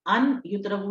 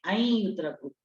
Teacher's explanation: تو نون کی ساؤنڈ دیکھیں، ہم اسے ان یتربو نہیں پڑھیں گے، ہم اسے پڑھیں گے این یتربو. یعنی نون کی ساؤنڈ کو ہم نے یا کی ساؤنڈ کے ساتھ ملا دیا. اس کو کہتے ہیں ادغام کرنا.